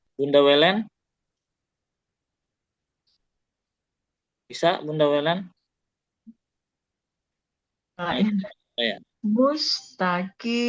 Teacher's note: Untuk sin-nya udah benar, ya, mengalir dan berdesis.